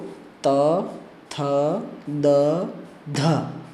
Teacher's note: त, थ, द, ध इन सब का उच्चारण स्थान दंत है और आभ्यंतर प्रयत्न भी स्पष्ट है